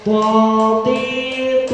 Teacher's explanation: huruf th ini adalah huruf takkim atau tebal dibaca dengan tebal tidak tidak menarik Sisi bibir ya tidak seperti tersenyum th th